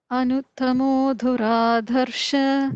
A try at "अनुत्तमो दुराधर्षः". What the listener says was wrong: The first da is a regular alpa prana da.